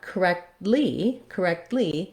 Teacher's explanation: we add the lee syllable so that's another unstressed syllable